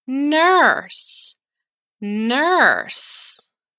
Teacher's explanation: notice how this word isn't read as ers it's just nurse you only hear the er sound